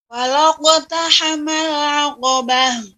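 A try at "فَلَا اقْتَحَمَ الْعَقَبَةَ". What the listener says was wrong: Ya, Ibu, untuk lam, ya, kita tetap harus menjaga lamnya tidak boleh tebal, bukan falaq, falaqu. Ya, tetap. Ya, kofnya sudah bagus, sudah tebal, akan tapi lamnya tidak boleh, nggak boleh terpengaruh menjadi tebal. Falaqu, falaqu, la, falaqu. Caranya dibuka mulutnya. Falaqu, falaqtahamal aqabah. Tidak boleh falaq. Maka caranya lamnya dibaca dengan sempurna. Fala, fala, baru masuk ke kof. Falaqu, falaqu.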